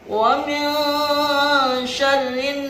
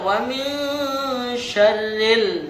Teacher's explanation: ada alif lam tetapi langsung dihilangkan, langsung diganti dengan huruf nun. Tidak dibaca wa min syarril. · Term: alif lam samsiah